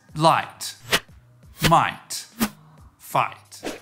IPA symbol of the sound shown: ai